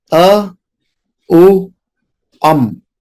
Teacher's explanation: जैसे ओम शब्द जो बना है 3 लेटर से बना है, अ, उ, अम। अ और उ मिलकर बनते हैं ओ, और उसमें है अनुस्वार अम। सो ये तीनों मिलकर हो गए सिंगल सिलेबल वर्ड ओम।